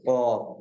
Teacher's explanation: ایسے ہی قوف اور کاف کو پڑھا تھا کہ قوف جو ہے زبان کی جڑ، اور اوپر کا تالو جب لگے گا قوف کے ساتھ تو قوف ادا ہوتا ہے